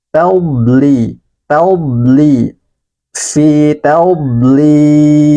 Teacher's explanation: ini huruf dod, dia memanjang ya dari tepi lidah hingga ke ujung lidah. Tadli, fi tadlil, panjangkan 4 harokat karena ini mat arid disukun.